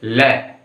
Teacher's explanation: ऐसे वर्ण जिनका उच्चारण स्थान करते समय हमारी श्वास वायु मुख के बगल से होकर निकलती, बीच में से नहीं, बगल से होकर। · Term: पार्श्विक व्यंजन